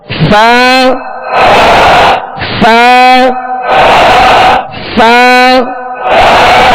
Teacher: ऊपर के दांतों के किनारे और निचले होठ के तर हिस्से से फ अदा होता है